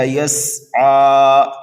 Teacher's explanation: سین کو سیٹی کی آواز دیں گے